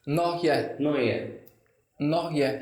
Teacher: सो हम उसमें टी को साइलेंट कर देते हैं